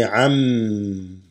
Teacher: Whenever you have a noon sakina followed by a meme, it assimilates, meaning instead of an, you say am